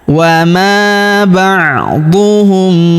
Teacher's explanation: Kemudian huruf mim sukun bertemu huruf bi, maka mim sukunnya melebur ke huruf bi, kita baca dengung dan kita tahan dengungnya 2-3 harokat